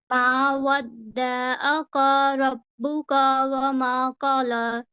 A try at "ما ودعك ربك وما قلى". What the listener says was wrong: آپ ایک زبر کو چھوڑ دیا آپ بالکل ریلیکس ہو کے سنائیے بالکل ریلیکس ہو کے سنائیے آپ صحیح پڑھ رہے ہیں لیکن جلدی میں آپ غلطیاں کر رہے ہیں